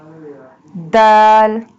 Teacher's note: Dal pronounced from the tip of the tongue touching the roots of the top two front teeth